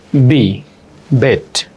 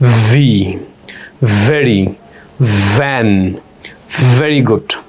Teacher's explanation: বি যখন উচ্চারণ করবেন শুধু দুই ঠোটের মাঝখান দিয়ে একটা সাউন্ড বের হবে লাইক বি বেট আর ভি যখন পড়বেন আপার টিথ লোয়ারলি ধাক্কা দিয়ে বাতাসে বের হবে